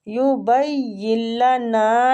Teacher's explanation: नून को खींचेंगे अलिफ मद की वजह से